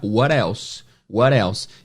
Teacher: Esse T, quando ele está entre vogais, ele pode virar o som do flap T, que é o R, né?